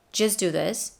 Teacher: In the word just, the cloud dropped the T at the end.